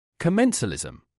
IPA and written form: kə-ˈmen(t)-sə-ˌli-zəm (Commensalism)